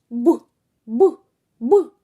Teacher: коли хтось промовляв ці звуки повітря не виходило вільно з ротика А зустрічала перешкоду